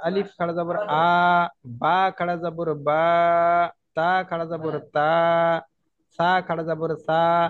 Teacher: এই আলিফ খাড়া জবর আটা হচ্ছে এক আলিফ পরিমাণ টান দিয়ে পড়তে হবে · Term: মাদ্দে হারাকাত